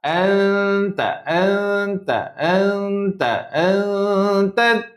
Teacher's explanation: Lidah tu nak sebut ta. Tapi dia samarkan nun dulu. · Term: Ikhfa